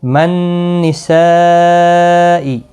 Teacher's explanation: نون مشدد پر غنہ ہوگا، یہاں پر مد متصل ہے اور اس کو 4 الف کی مقدار کے برابر کھینچ کر پڑھیں گے۔